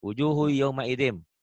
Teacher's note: Kenapa ditahan? Karena mim itu termasuk idgham biguna yang ada dengungnya, ada tahannya gitu ya